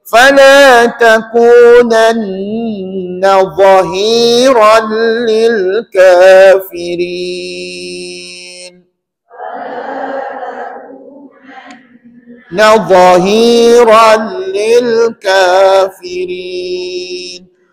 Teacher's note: Dia zahir ya pendek. Dha tu pendek dan dibaca dengan tebal lah.